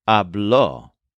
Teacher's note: the form for he, she, or usted talked is habló, also with a stress on the second syllable.